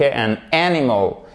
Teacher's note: vous mettez bien l'accent sur la première syllabe